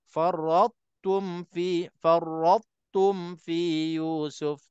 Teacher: To kita nak kena kekalkan sifat tebalnya dan kita tak boleh qalqalah dan terus kita menyebut huruf tum.